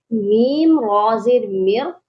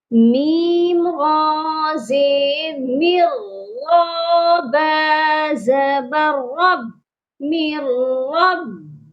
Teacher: میم کے بعد ہے نون ساکن، جس کو ہم نے نہیں پڑھنا کیونکہ یہاں پر ادغام بلا غنہ ہو رہا ہے۔ جب بھی نون ساکن کے بعد حروف یرملون کے لام اور را میں سے کوئی حرف آتا ہے تو ادغام بلا غنہ ہوتا ہے، یعنی ادغام کیا جاتا ہے، ملایا جاتا ہے، لیکن غنہ نہیں کیا جاتا۔